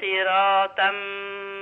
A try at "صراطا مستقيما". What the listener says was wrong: بقت سين. هي سين معايا ولا صاد؟ يبقى صاد كسرة صي.